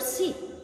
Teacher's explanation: produced by raising the front of the tongue fairly high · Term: vowel